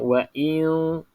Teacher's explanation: Maksudnya wa'i. Okey, hamzah ni dia keluar dekat halqum kan, dia tak keluar kat hidung. Jadi wa'i. I dekat dalam, jangan wa'i.